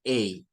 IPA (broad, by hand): eɪ